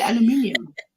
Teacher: the British people, like I hear them specifically, they add an extra syllable